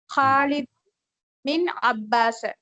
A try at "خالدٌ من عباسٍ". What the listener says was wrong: خالد கடைசி கொண்டு இல்ல ஹரக்கத்துட்டாக்கு. من عباس.